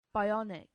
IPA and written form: baɪˈɒnɪk (bionic)